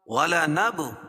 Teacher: بل احیاء ولکن لا تشعرون وَلَنَبْلُوَنَّكُمْ بِشَيْءٍ مِّنَ الْخَوْفِ وَالْجُوعِ وَنَقْصٍ مِّنَ الْأَمْوَالِ وَالْأَنفُسِ وَالثَّمَرَاتِ. وَلَنَبْ با پر قلقلہ اور نون کے اوپر تشدید ہے تو نون مشدد ہوگا